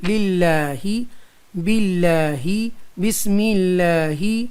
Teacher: اب یہاں ترقیق ہوگی کیونکہ اس میں جلالت سے پہلے زیر آ رہی ہے، اس لیے باریک پڑھیں گے، سافٹ پڑھیں گے